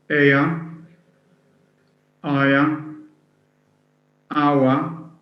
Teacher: So a triphthong then has a diphthong plus a schwa. It has 3 vowels joined together, a schwa preceded by a diphthong.